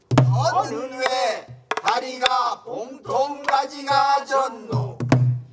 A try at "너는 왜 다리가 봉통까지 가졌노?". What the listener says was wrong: 하다고 음을 이상하게 하지 마세요. 너는 왜 다리가 봉통까지 가졌노?